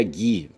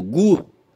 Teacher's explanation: a pronúncia subjacente implica a não realização fonética do U